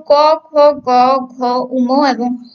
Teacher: এইগুলো যখন আমরা উচ্চারণ করি তখন সেটা জিহ্বা মূলকে স্পর্শ করে, তাই আমরা হচ্ছে এগুলোকে কণ্ঠ বা জিহ্বা মূলীয় বর্ণ বলবো।